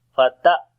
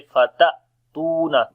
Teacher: when hamza comes with sukun sign we make jerk sound there. And also it will be the quality of shiddat, because hamza is the letter which has a shiddat quality.